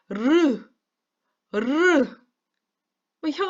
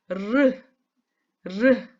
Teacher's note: 혀를 따르륵 굴리면서 혀 양옆으로 바람이 사르륵 빠져나가지요